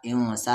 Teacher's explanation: ان پر نون ساکن کے بعد سین ہے تو یہاں پر اخفا ہوگا